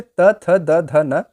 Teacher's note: जिसका उच्चारण ऊपर के दांतों पर जीभ लगाने से होता है उसे दंत्य कहते हैं